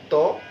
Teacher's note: যাই হোক, আমরা যেটা বলছিলাম, এই দন্তমূল হচ্ছে আমাদের এই উপরের দাঁতের যে গোড়া, সেখান থেকে কিন্তু আমাদের দন্তবর্ণগুলো উচ্চারিত হবে। ত বললে আমরা দেখবো দাঁতে লেগে আছে, ত, দাঁত থেকে জিভটা সরে আসলো